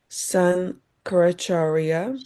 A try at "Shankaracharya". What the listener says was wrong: Shankaracharya. So, this S, when it has this sign, so it is sh, not s. Yes, it will sound as sh. So, just like it's not Sri, it's Shri Krishna.